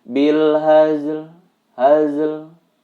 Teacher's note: seolah-olah membaca hazel hazel tetapi pembacaan bunyi lemnya tidak terlalu jelas ataupun tidak terlalu menekan